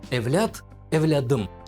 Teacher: перед гласным звук Т меняется на парный согласный д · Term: озвончение